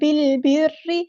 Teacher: بالبر، با کو ہم نے لام کے ساتھ ملا دینا ہے، حمزۃ الوصل ہمارا ڈراپ ہو جائے گا، لام یہاں پر لام قمریہ ہے، ظاہر کر کے پڑھیں گے، را پر زیر ہے تو باریک پڑھیں گے، لائٹ لیٹر بن جائے گا، اور را کی شد کو اچھے سے ادا کرنا ہے، ایک بار ساکن کر کے ایک بار اس کی حرکت کے مطابق۔